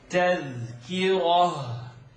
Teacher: Ra. Ra is heavy and you're ending on the feminine ta. This ta is going to turn into a ha. · Ra is heavy and you're ending on the feminine ta. This ta is going to turn into a ha. When you stop on it, the sound gets, it reverberates in your chest.